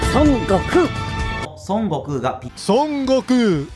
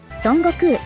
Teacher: That N should be coming from the back of your mouth, not the front area. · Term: more like an NG